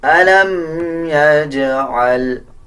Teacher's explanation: جیم کے اوپر جزم ہے، قلقلہ کیا جائے گا، اسی طرح عین کا مخرج صحیح ادا کیا جائے گا۔